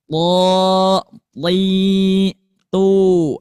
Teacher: Kalau tho ini pertengahan dalam pengucapannya. Cuman pangkal lidah naik ke atas karena mempunyai sifat tebal.